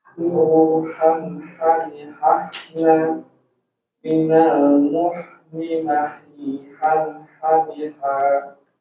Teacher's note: Jadi huruf H itu dari tenggorokan tengah.